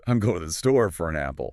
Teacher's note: The word for loses its hard O and turns into a tiny breathy fer. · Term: schwa